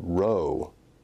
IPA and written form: roʊ (row)